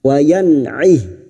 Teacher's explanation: nun sukun bertemu ain dibaca jelas tanpa mendengung, idhar halki, wa yan'ih.